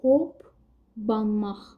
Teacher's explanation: P gəlir, sonra B gəlir. Yəni ikinci P B-ya keçir. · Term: kar samit cingiltili tələffüz olunur